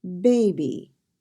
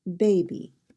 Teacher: The accent is on the first syllable.